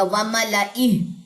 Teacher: یہاں پہ الف سائلنٹ ہے تو صرف لام پڑا جائے گا